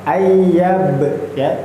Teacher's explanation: Jangan lupa nggih ada qalqalah di tengahnya. Qalqalah sugra.